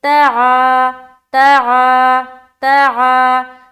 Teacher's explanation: الف مدہ کو ایک الف کی مقدار کے باقدر کھینچ کر پڑھیں گے